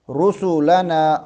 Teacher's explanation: را کو یہاں پر کر کے پڑھیں گے کیونکہ اس کے اوپر پیش آ گئی ہے